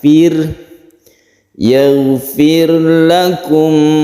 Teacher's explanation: Yaghfir, yaghfir, tidak qalqalah, tidak dipantulkan, bukan yaghfir tapi yaghfir, yaghfir. Fir tipis, tandanya itu bibir kita dikebawahkan.